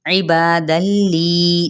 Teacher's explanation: इदगाम बिला गुन्ना का कायदा, ठीक है, क्योंकि तनवीन के बाद लाम आ रहा है इसलिए हम ठहरेंगे नहीं।